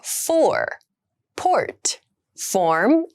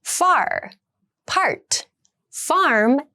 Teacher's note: All the sounds are rolled vowels, which means a vowel sound that ends with an R sound.